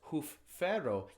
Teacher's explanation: you have to add that sort of glottal stop or pause or slow down to make sure you're catching the fact that there's two F's side by side. That's very rare in English.